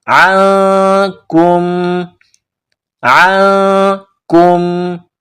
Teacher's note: حروف اخفا ہے، تو آواز ناک میں پیدا کرنی ہے، غنہ کرنا ہے۔